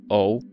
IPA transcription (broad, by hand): ɔu